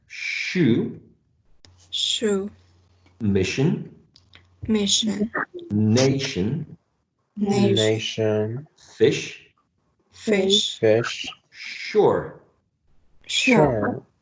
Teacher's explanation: Shh there is no vibration of the vocal cords